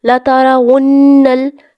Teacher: یہاں پر لَتَرَا، ٹھیک ہے، یہاں پر را کو آپ نے موٹا ادا کرنا ہے. ونل نون مشدد ہے، نون کے اوپر شد آ گئی اس لیے نون کو گنا کریں گے